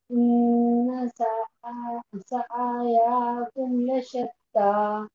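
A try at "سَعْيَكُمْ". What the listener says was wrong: हम ऐसे पढ़ेंगे सआयाकुम तो क्या हो जाएगा, आइन पर भी जबर लग जाएगा, या भी खिंच जाएगी, गलती हो रही है। सआयाकुम, सआयाकुम, सआया।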